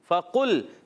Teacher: اوپر والے دانتوں کے کنارے نیچے والے ہونٹ کے تر حصے سے لگتے ہیں تو ادا ہوتا ہے فا